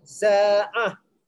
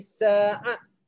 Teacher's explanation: Terus baca ta, berhenti baca ha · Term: ta marbutah